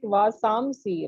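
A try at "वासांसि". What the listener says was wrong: you don't pronounce it like makara vasamsi you don't join your lips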